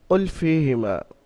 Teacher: কুল ফীহিমা, কুল হারাকাতের কায়দা আছে, ফীহিমা ইয়া সাকিন ডান দিকে ফাই নিচে জের এসছে, ইয়া মাদ্দা এক আলিফ পরিমাণ, ফা ইয়াজের ফি টান দিয়ে পড়তে হবে, ফি টান হবে।